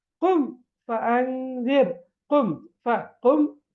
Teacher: மீமோ அல்லது பாவோ வராம வேறு எந்த எழுத்து வந்தாலும் நாங்க சுக்கு செய்யப்பட்ட மீமை வெளிப்படுத்தி ராகம்மின்றி ஓத வேண்டும் குன்னா இன்றி ஓத வேண்டும்